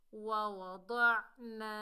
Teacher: الف خالی سے پہلے زبر آ رہا ہے، یہ الف مدہ ہے، ایک الف کی مقدار کھینچ کر پڑھیں گے · عین کو حلق کے درمیان سے ادا کریں گے